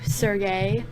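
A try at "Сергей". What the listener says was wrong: Just don't, not that much of an emphasis on the last part. Just Sergey.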